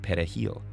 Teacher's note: Dominicans pronounce it perejil with a trilled Spanish R. The primary Haitian language, however, is Creole, which doesn't use a trilled R.